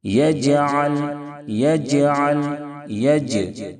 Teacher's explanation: یہاں پر بھی میم میں اظہار شفوی ہوگا، کیونکہ میم ساکن کے بعد نہ با ہے نہ میم ہے، اس لیے اظہار شفوی ہوگا، میم میں غنہ نہیں کریں گے۔ جیم حروف قلقلہ کے 5 حرفوں میں سے ہے اور ساکن بھی ہے، اس لیے جیم میں قلقلہ ہوگا، آواز لوٹ جائے گی